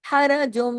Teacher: ह ये गले से पढ़ा जाएगा